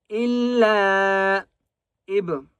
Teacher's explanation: با کے اوپر قلقلہ کریں گے